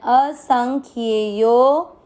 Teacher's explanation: आपको यो की मात्रा को लंबा खींचना है